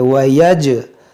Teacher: यहाँ पर जीम में कलकला करेंगे